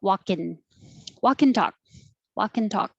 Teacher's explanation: the K will connect to the A because there's a vowel and you can release the airflow and you'll hear the K. Walk and talk, and you don't have to say the whole and.